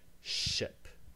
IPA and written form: ʃɪp (ship)